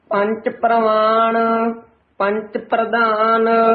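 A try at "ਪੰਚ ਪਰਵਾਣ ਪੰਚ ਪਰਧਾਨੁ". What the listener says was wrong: ਪ੍ਰਵਾਨ ਕਵਾਂਗੇ ਤਾਂ ਹੇਠਾਂ ਰਾਰਾ ਲੱਗ ਜਾਏਗਾ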